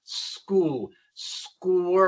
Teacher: Ya saben que en inglés la Q seguida por la U no es igual que en español. La Q sigue siendo el sonido de la K, pero la U no es muda, suena. Es como u, igual que en español.